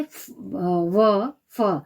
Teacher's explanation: दंतोष्ठ दांतों से, जैसे व, फ। नीचे होंठ व ऊपरी दांतों से, दंतोष्ठ्य।